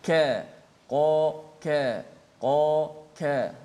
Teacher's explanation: Qa adapun ka dia dekat makhrajnya tetapi sifatnya nipis, tidak terangkat pangkal lidah. Ka qa ka qa ka, itu perbezaan dia.